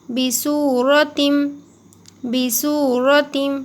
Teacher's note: یہاں پر واو مدہ ہوگا، سین واو پیش سو، تھوڑا سا کھینچ کے پڑھیں گے، را کے اوپر زبر ہے تو را کو موٹا پڑھیے، را، را زبر را، جب بھی را کے اوپر زبر آئے تو را کو موٹا پڑا کریے، را۔